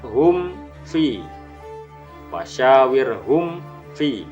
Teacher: Izhar safawi adalah hukum bacaan mim sukun diikuti huruf berikutnya pada lafadz hum fi, wasyawir hum fi, harus dibaca jelas, tidak boleh berdengung. Huruf mim sukun bertemu fa.